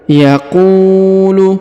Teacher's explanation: huruf qu diayun sekali karena di depannya terdapat waw sukun